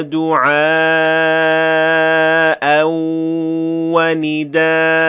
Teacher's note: we had to pronounce that invisible alif, alif al-iwad, even though it is not written. So there is an invisible alif when the word ends with hamza, or the word ends with a hamza that is preceded by an alif.